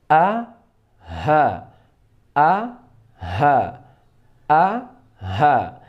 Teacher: di tenggorokan paling bawah ini keluar 2 huruf, yaitu huruf hamzah dan huruf ha